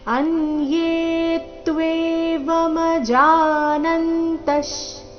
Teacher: ಯ ಮೇಲೆ ಕೂಡ ದೀರ್ಘ ಹೇಳಿ ನಂತರ ಆಘಾತ ಬರಬೇಕು